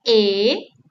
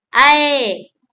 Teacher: There is a tip that if you place your hand under your chin and when you say A, your mouth is open less, but when you say I, your jaw drops down lower than A.